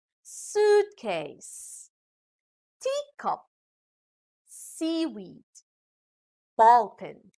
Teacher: compound words with two elements and the stress are on the first element of the words